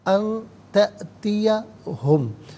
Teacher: ان تأتیہم، ناظرین ان میں نون ساکن، اس کے بعد تا حرف اخفا ہے تو نون ساکن کو اخفا کے ساتھ پڑھیں گے، ناک میں آواز لے جا کر گنگنانے کو اخفا کہتے ہیں۔ تا میں آپ دیکھیں حمزہ ساکن ہے، اسے جھٹکے کے ساتھ پڑھیں گے۔